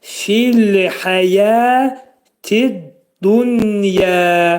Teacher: burada hə boğazın ortasından çıxarılır. Yə 2 səs qədər uzadılacaq.